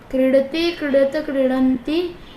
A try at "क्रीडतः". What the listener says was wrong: आप विसर्ग को छोड़ रहे हो, देखो, क्रीडति, क्रीडतः, क्रीडन्ति, बोलो